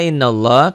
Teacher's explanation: innallah lafaz Allahnya dibaca tebal